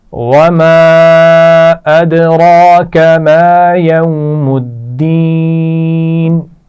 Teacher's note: یوم الدین، واو لین ہے اور یوم الدین دین میں یا مدہ ہے